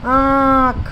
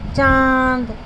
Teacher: इसका उच्चारण नाक और गले दोनों से होता है। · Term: अनुनासिक